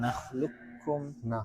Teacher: Qafnya sudah enggak ada bekasnya, jadi langsung nakhluqkum. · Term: idgham kamil